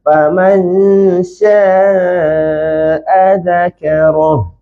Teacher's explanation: Huruf ra sahaja yang tebal. Yang lain semua nipis. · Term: ra tebal